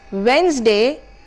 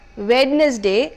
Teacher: The D sound here is silent